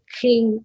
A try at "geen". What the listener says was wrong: Kh. Kh. Kh. थोड़ा सा और throat में आना चाहिए. Throat में. Geen Geen.